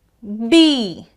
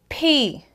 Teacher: So it's B, feel the vibration. P, feel the air.